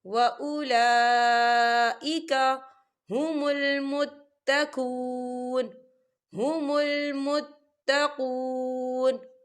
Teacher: وَأُولَا لام کے اوپر کھڑی حرکات ہے اور اس پر مد بھی ہے، تو ہم اسے چار حرکت کے برابر کھینچ کے پڑھیں گے